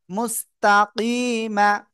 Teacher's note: থেমে পড়লে তিন আলিফ টান হবে, এখানে সাকিন হবে, তিন আলিফ পেয়ে যায় এখানে।